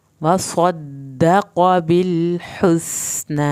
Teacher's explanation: صاد کو پر کیا جائے گا، دال کی شد بھی ادا کرنی ہے، قوف کو موٹا پڑھنا ہے لیکن اس کی زبر کو لمبا نہیں کرنا.